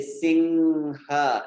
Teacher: it's that nasal sound where you don't even need to close your lips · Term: anuswara